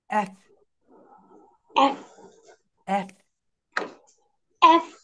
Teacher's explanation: এফ, উপরের দাঁত নিচের ঠোঁটের সঙ্গে।